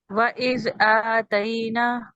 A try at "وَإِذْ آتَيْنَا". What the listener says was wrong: نون کے بعد بھی الف ہے. دوبارہ سے